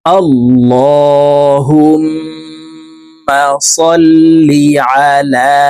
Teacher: লামকে এক আলিফ টেনে পড়বো